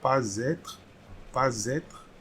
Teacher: liaison starting with S will create a letter Z